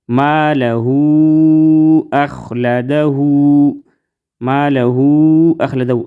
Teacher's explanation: ادھر ہم تین الف کے برابر کھینچ کر پڑھیں گے. ادھر مد ہے مد منفصل اس کو ہم لمبا کریں گے تین الف کے برابر